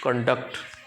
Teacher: for the word conduct used as a noun. Where is the primary stress placed? On the first syllable